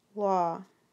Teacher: the sound is the one that sounds simar to the a sound but it's made by raising your jaw and rounding your lips a bit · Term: open o, open O